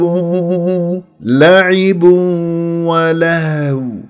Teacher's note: شوف الها ساكنه فراح اهتزاز الاوتار الصوتيه يكون واضح